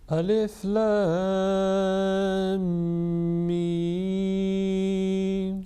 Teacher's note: The assimilation will take place with gunna, with nasal sound, again about 2 seconds.